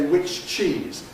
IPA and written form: ˌwɪʧ ˈʧiːz (which cheese)